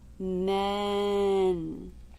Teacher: the front of the tongue simply goes up to the roof of the mouth for the N